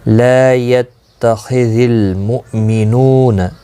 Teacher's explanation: لا يتخذ المؤمنون، لا الف مدہ ہے، ایک الف کی مقدار کے برابر کھینچ کر پڑھیں گے. خا مستعلیہ ہے، پر پڑھا جائے گا. لام ساکن کو ہلانا نہیں.